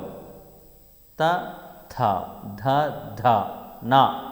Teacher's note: తర్వాత దంత్యములు, దంతము సహాయము చేత పలకబడేవి దంత్యములు